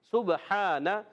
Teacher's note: سین سیٹی کے ساتھ باریک ادا ہوگا